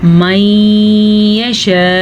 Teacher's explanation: اس طریقے سے آپ رکیں گے کہ حمزہ واضح ہو, نہ کہ اس کی زبر پڑھیں · یہ بڑی مد ہے, اس کی مقدار 5 حرکات عربیہ ہے. 5 سیکنڈ تک آپ نے اس کو کھینچ کے پڑھنا ہے.